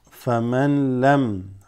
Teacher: This noon is not read. This goes straight to the lam.